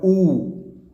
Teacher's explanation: तो ऊ देखिए जिसमें संवर्त होता है, मुख जो है, होठ जो है गोल हो जाते हैं, वो आपका और साउंड पीछे से आती है, तो ये आएगा ऊ।